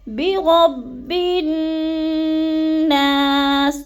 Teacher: اور با اور نون مشدد کو سختی سے جماؤ کے ساتھ پڑھنا ہے، اور برب اکثر مسٹیک کر جاتے ہیں، برب بالناس، یعنی لام کو تھوڑا سا پڑھ جاتے ہیں، تو ادھر لام نہیں پڑھنا کیونکہ الف اور لام پر کوئی حرکت نہیں ہے، تو با کو ہم نے نون مشدد کے ساتھ ملا کے پڑھنا ہے اور سختی سے پڑھنا ہے، جیسے برب الناس، تو غنّے پہ تھوڑا سا رکنا ہے، برب الناس، اور نا کو تھوڑا سا لمبا کر جانا ہے کیونکہ ادھر الف مدہ ہے۔